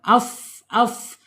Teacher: Ujung gigi seri atas menyentuh perut bibir bagian bawah. · Fa ini ada di asyafatain dua bibir ya.